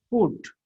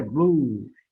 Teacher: it is very short u but here blue you are getting here long u